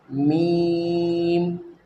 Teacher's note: दोनों होठों के सूखे हिस्से से मीम अदा होता है, मीम यानी होठ बंद रहेंगे